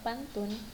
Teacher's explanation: kedua ada asimilasi regresif pada bunyi P bunyi hambat pilabial tetapi bunyi P pada silabil pertama kata pantun dilafalkan secara apikoalveolar